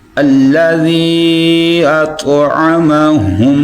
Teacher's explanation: طا جو ہے اس کو پر پڑھیں گے، ادھر تا کی آواز نہیں آنی چاہیے، طا کی آواز آنی چاہیے، یعنی اس کو پر پڑھنا ہے۔